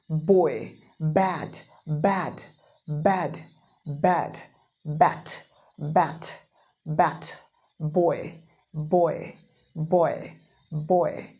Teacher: Bilabial कहने का मतलब होता है दोनों होठों से बा बा, पूरा अंदर से एयर लाने का और रोक के पूरा झटके से दबा के पूरा लिप्स को दोनों बोलना है.